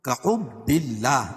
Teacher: اللہ کا لام باریک پڑھا جائے گا، کیوں؟ اس لیے کہ اللہ کے لام سے پہلے با کے نیچے زیر ہے۔